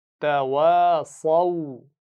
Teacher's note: صاد کو موٹا بھی پڑھنا ہے